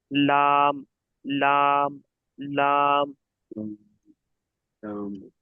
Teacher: জিভের আগার কিনারা এবং সামনের উপরে দুই পাশের দাঁতের গোড়া